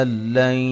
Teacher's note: یہاں نون ساکن کا ادغام بلا غنہ ہے، یعنی کہ غنہ نہیں کریں گے یہاں